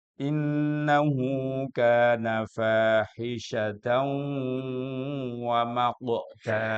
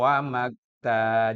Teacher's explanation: Wa maqu itu qaf, harus dikolkolah. Kalau wa makta jadinya kaf.